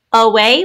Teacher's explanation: we have a schwa sound in the first syllable because we stress the second syllable, which has a long A sound spelled A-Y.